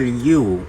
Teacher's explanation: The back of the tongue is raised such as in the vowel U. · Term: back vowels